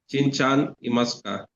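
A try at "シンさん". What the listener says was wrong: Not Chan, it's San. S-A-N. Although in normal letters we write it as S-A-N, but the correct pronunciation is San, not San. Sa. San. Shin-san.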